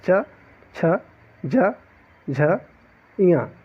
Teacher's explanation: यदि आप उच्चारित करेंगे तो जो तालु होती है, हमारी जो जीवा होती है, जीवा के ऊपर वाला जो भाग होता है, वहाँ पे च, जो पूरी आपकी जो जीवा है वह ऐसे ऊपर में लटकती मतलब छूती है ऊपर तालु को, इसलिए उसे तालु व्यंजन कहा जाता है।